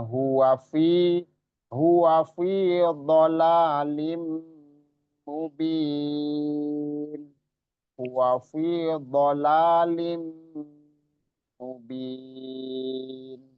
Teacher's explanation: Jadi memasukkan nun tanwin atau nun sukun atau tanwin dengan gunnah, dengan dengung. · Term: idgham bi gunnah